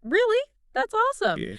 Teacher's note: You can say that with a rising enthusiastic tone showing genuine excitement